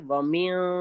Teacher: دیکھیے یہاں بھی ومن کو ہم پڑھیں گے ومن ٹھیک ہے نون کی آواز کو ناک میں چھپائیں گے